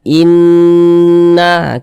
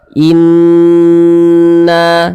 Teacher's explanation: Sehingganya kita baca gunnah itu didengungkan, kita baca inna, kita dengungkan, kita panjangkan sejenak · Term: gunnah musyaddadah